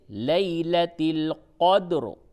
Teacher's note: فی لیلۃ القدر، قدر میں عام طور سے لوگ قدر بول دیتے ہیں، قدر نہیں، بلکہ دال میں قلقلہ کرنا ہے اور را کو پر کر کے پڑھنا ہے